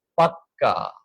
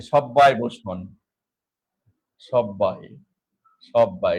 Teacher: কথায় জোর দেয়ার জন্য ব্যঞ্জনে দুইবার উচ্চারণ করে বলি